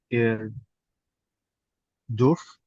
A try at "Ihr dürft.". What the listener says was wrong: Durs, pakai T belakangnya ya.